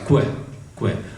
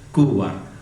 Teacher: И в принципе, вот этот согласный сочетание, это звук «кэ» можно охарактеризовать как глухая лабиовелярная, то есть губная, двухфокусная фриката. А двухфокусная, то есть два фокуса образования.